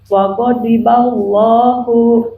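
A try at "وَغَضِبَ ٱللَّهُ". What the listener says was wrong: Hu-nya dhammah monyong.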